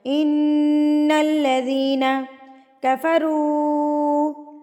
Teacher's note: جب نون کے اوپر تشدید آتی ہے تو غنہ کیا جاتا ہے، ناک میں آواز لے کے جائی جاتی ہے. تو یہاں پر ہم ناک میں آواز کو لے کے جائیں گے اور پڑھیں گے اس ساؤنڈ کو کہتے ہیں غنہ.